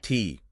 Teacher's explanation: It's a plosive. A sharp vertical stop of air.